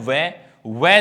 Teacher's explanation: वै, ये ध्वनि दांतों और होठों से बोली जाती है। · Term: दंतोष्ठ